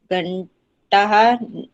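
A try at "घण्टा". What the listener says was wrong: हाँ, देखो, घंटा में विसर्ग नहीं है ना, घंटा बोलो, घंटा हाँ नहीं बोलो।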